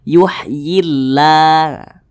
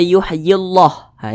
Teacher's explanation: kalimat Allah di belakangnya hurufnya berbaris ke bawah maka harus dibaca tipis